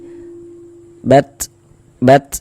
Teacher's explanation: Jadi ada nafas yang mengalir ketika kita mengucapkannya. Karena di antara sifat huruf ta itu dia memiliki sifat hams.